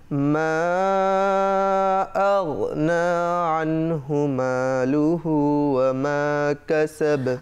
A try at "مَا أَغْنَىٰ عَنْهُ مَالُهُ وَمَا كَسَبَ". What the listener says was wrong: আচ্ছা, ওয়া হরফটি 2 ঠোঁট গোল করার দ্বারা, ওয়ামা 2 ঠোঁট, দর্শক ওয়ামা 2 ঠোঁট গোল করার দ্বারা ওয়াও হরফটি উচ্চারিত হয়, ওয়ামা নয়, ওয়ামা এই। তো এখানে একটু তোমার ভুল হয়েছে, কাসাব বা কলকলা করতে হবে।